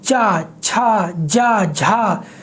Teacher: आपकी जो जीभ है वो आपके तालू से टकराती है, इसलिए ये सब तालव्य वर्ण है